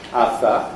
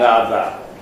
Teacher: dental, and this gives tongue tip to the teeth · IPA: ɑθɑ